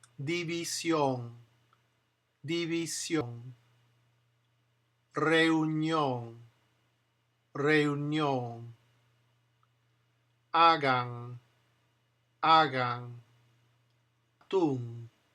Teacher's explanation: When the N is final on Spanish words, it has the sound of ing, of that ing, that ng sound at the end.